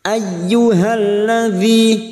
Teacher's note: masuk pada huruf ya yang bertasdid, hanya masuk tanpa ditekan lama-lama, tanpa mendengung